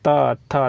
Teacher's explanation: तवर्ग में होता है दंत से होता है त, थ। देखिए दंत पर यहाँ पे जिह्वा का स्पर्श होता है इसलिए तवर्ग हो गया, ये दंत से हो जाएगा।